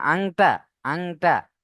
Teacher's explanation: [music] কদ এখানে দেখেন হামজা নুন জবার আন নুন সাকিনের পরে ইফার 15 টি অক্ষরের মধ্যে কফ রয়েছে তাই আমরা নুন সাকিনকে নাকের মধ্যে তুলে এক আলিফ পরিমাণ গুণনা করে পড়ব